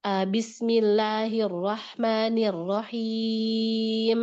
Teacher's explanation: Jelasin em-nya. Jangan ar-rahim. M-nya hilang, nggak kedengeran.